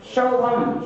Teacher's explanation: यहाँ पर सा है वो तालु स्थान से उच्चारित होगा